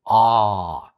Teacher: all vowels are voiced if you do ah for example you will notice that there is vibration happening if you do the same thing without vibration